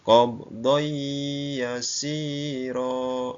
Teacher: Bunyi tanwinnya hilang dan masuk ke dalam huruf ya. Ya. Nun mati bertemu dengan huruf ya. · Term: idgham bil gunnah